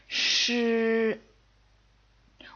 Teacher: Notice that it's spelled with an SH, so you might think it sounds like she, but actually it's a retroflex sound, so you got to make sure you curve your tongue all the way back